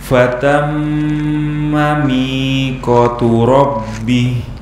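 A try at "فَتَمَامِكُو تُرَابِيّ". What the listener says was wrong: Ayo, mi ko tu, mi dan ko panjang dua harokat.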